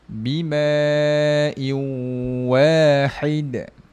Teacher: Bimau dengungkan. Masuk dengung dua harakat. Bimau muncungkan sebab dia bertemu dengan huruf wau. · Dengungkan, masuk dengung 2 harakat. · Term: Idgham maal maal ghunnah, Idgham ma'al gunnah